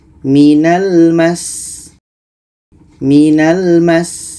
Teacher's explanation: Sin ini sifatnya juga Hamas ada anginnya